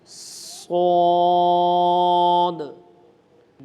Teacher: یہ سین کی آواز ہی نکلے گی پہلے سین کی طرح، لیکن اس کو ہم نے موٹا کر دینا ہے